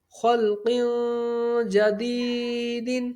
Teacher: جیم بھی حروف اخفاء میں سے ہے، تو یہاں پر بھی غنہ ہوگا. خو لام زبر خل، قاف دو زیر قن، خلق.